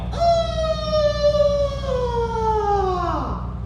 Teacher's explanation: You can hear I'm very raspy because I've been talking for 3 days.